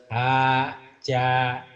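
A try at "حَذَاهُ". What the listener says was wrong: hadza mana ajaja. Titiknya di atas. Ya, hadaho ketuker ya Pak ya.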